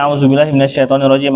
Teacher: Oh, yang tebal cuman to sama ro.